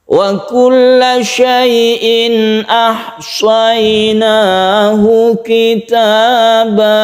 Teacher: Syai'in ahsaynahu ini adalah idhar halqi, ini tidak berdengung.